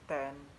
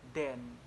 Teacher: a classic contrast of voiceless and voice alveolar plosive